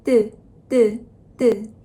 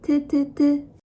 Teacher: can you feel the root of your tongue stick with the palate and your throat is kind of closed?